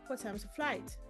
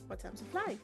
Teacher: The first one is falling and the second one is rising.